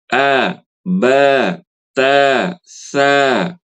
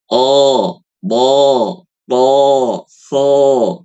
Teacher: Karena abatasa huruf yang memiliki sifat tipis atau istifal. IstiLa tebal, istifal tipis.